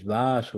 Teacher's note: the first a is long